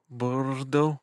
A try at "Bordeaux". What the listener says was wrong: But you don't have to roll the R.